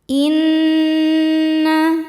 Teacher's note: Sebab nunnya bertasydid. Cara bacanya didengungkan. Tahan dengungannya kurang lebih dua harakat. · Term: nun musyaddadah